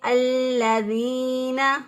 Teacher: لام کو اسی طرح مضبوطی اور قوت کے ساتھ، کیونکہ اس کے اوپر شد ہے، مضبوطی اور قوت کے ساتھ ادا کیا الَّذِينَ، ذال زیر یا دی، یا ساکن سے پہلے والے حرف کے نیچے زیر، اس یا کو 1 الف کے برابر لمبا کریں گے، یہ یا مدہ کہلاتی ہے، جس یا کو لمبا کیا جاتا ہے اس یا کو مدہ کہتے ہیں.